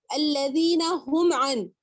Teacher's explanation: میم ساکن کے بعد عین آ گیا تو بھی آپ کو یہاں پر غنہ نہیں کرنا پڑے گا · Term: اظہار شفوی